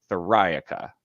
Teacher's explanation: it's like metallica where you emphasize that second syllable